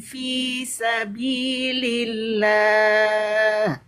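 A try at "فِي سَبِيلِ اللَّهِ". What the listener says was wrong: Fi bukan V ya. Agak mereng tadi. Bukan V tapi fi.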